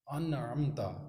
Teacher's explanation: وہاں پہ نون کا اظہار ہوگا، یعنی کہ نون واضح طور پر پڑھا جائے گا